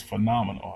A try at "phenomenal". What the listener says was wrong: I think you put the emphasis on the wrong syllable.